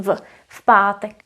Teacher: P is voiceless and it affects the previous consonant v.